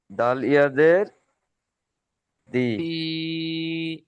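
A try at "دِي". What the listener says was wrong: তো টানগুলো আর একটু ধরে দিতে হবে, আর একটু বেশি টান দিতে হবে।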